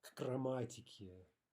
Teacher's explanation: No pause, no vowel after the ka, the k.